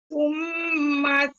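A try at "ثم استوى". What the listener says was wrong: Ghunnah bagi cukup. Tsummastawa. Ada tengok mim syaddah, ada gunnah, bagi cukup.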